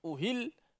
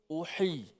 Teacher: Dia ada sedikit hams ataupun sifat hamas, nafas terlepas tadi.